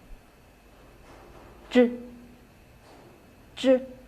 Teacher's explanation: The tip of the tongue is raised to the hard palate to form an obstacle. With a sudden separation, the air is let out.